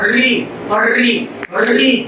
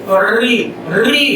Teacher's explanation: यदि कंपन करूंगा तो उसमें इकार कंपन के बाद आएगा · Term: प्रकंपित ध्वनि